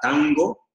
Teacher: la N ligeramente se curva hacia atrás y toca un poquito el paladar, el paladar blando de atrás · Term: retrofleja